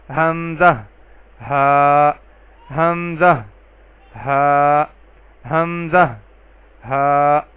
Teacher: اقصی حلق یعنی حلق کے آخری حصے، سینے کی طرف والے حصے سے ان دونوں حروف کی ادائیگی ہوگی